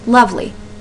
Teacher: The emphasis is on the beginning of that word.